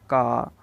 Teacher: ये कंठ से उच्चारित होता है